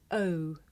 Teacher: O and ow glide towards the closer phoneme U. This is a diphthong, a double vowel sound. The shape the mouth makes changes from the beginning of the sound to the end. It's pronounced O. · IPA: əʊ